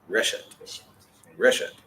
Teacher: The emphasis moves back one syllable from the end. To the front.